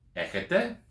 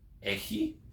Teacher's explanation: you put a bit of intonation on the accented syllable to make it a bit of a question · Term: rise in tone